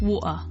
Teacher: variations of British English the glottal stop is used in place of a t so for example the word water with a glottal T would · about to put the tea in but then you kind of there's a tension in your throat that just cuts off the sound